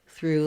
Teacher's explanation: with two o's because even though there's lots of letters here we actually just have the voiceless th the r and the u sound